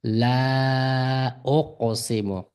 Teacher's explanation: Qofni bu yerda qalqala o'qiymiz. Qalqala deymiz harfni asl sukunli harfni xuddi titrtib oldida hamza kelgan bo'lsa o'qo deb mana o'qiymiz.